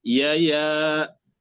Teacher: ثم الألف بعد الياء نقرأ بالترقيق، يا لا نفخم الألف، لا يا.